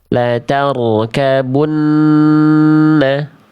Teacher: nun tasydid itu punya hukum dengung, dengung atau gunnah. Maka tentu kalau ada dengung-dengung pasti kita harus tahan 2 harokat.